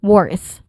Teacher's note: it has a short o sound and then it uses it ends with a voiceless th sound